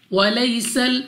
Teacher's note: یا ساکن سے پہلے زبر یا لین بغیر کھینچے بغیر جھٹکا دیے پڑھیں گے